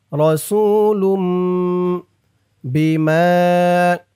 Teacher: ছোট্ট একটা মিম আছে এই মিম কে ধরবে ইকলাব গুনা হবে